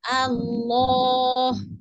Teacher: Lamnya tebalkan. Lidah tengah dicekungkan ya.